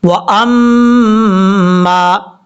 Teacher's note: میم کے اوپر شد ہے، شد کی وجہ سے غنہ کریں گے